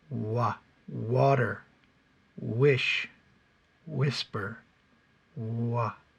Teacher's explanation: I purse my lips purse your lips and they come away from the front teeth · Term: W sound